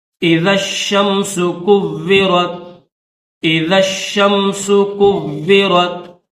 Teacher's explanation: شین مشدد ہے، واو بھی مشدد ہے، تو سختی کے ساتھ پڑھیں گے